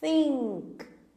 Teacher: Percebam que a língua da teacher está passando entre os dentes.